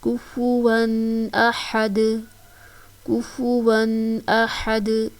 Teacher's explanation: حمزہ زبر ا، ح زبر ح، دال دو پیش دون، احدن، احدن. وقف کر رہے ہیں تو دال جو ہے وہ ساکن ہو جائے گا، ساکن ہونے کی صورت میں اس پر ہم قلقلہ کریں گے